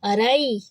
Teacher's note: لا روئی، یا را کو یا سے ملائیں گے، را موٹا حرف ہے، اس کو رے نہیں پڑھیں گے، رئی، یہ ہے لین، یا لین، بل کھاتی آواز